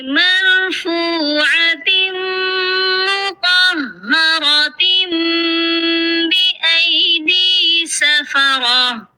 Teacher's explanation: تو مطہرۃ یہاں پر اقلاب ہو رہا ہے کیونکہ تنوین کے بعد بأیدی اس کا با آ گیا ہے، اسی لیے یہاں پر تنوین کی جگہ میم کو دے دی جائے گی